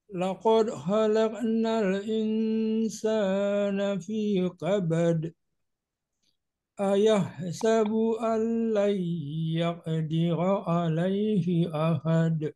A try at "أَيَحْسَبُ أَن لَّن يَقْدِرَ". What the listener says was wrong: Ayahsabu an lan yaqa. Ada huruf q-nya. Jangan ya. Nah, kalau gitu dia seperti huruf ain nanti.